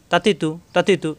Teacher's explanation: তাতিতু তাতিতু এভাবে জিহ্বার আগা উপরে দুই দাঁতের গোড়ায় লাগবে